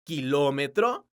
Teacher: La palabra kilómetro es una palabra esdrújula porque su sílaba tónica es la sílaba lo.